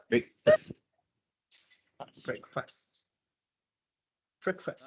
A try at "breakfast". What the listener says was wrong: It's not break. It's not break. It's brack. The E is like the E in pen. Because most of us will pronounce it as breakfast. So it's not break. Why break? Because B-R-E-A-K, break. Yeah, although it is part of that, it's B-R-E-A-K, but when it becomes a word, it forms a word, for example, with the word F-A-S-T, that becomes breakfast, okay?